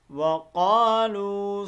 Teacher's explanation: یہ دیکھیں واو مدہ ہے، اس کو ہم ایک الف کے مطابق کھینچ کر پڑھیں گے